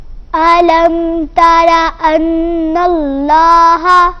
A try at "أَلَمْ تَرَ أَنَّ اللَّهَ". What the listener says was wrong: لام کو موٹا کیجئے۔ ان اللہ،